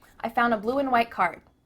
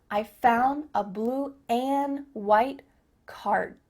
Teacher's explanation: Just cut off that final D sound